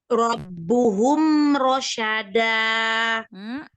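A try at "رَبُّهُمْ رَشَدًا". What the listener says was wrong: memang terkadang sering memanjangkan harokat. Diperhatikan ya, jangan memanjangkan harokat. Langsung aja gitu ya.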